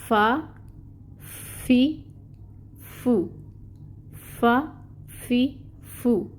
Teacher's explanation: ऊपर के 2 दांत नीचे वाले होंठ के तर हिस्से से लगें तो हर्फ फ़ा अदा होता है। इसमें ज़ौफ़ है, यानी नरमी से अदा करना है।